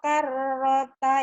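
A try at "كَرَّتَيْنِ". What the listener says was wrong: Rohnya pendek.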